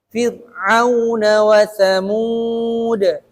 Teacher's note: Fir'auna wa, tapi na-nya nggak boleh dibaca panjang.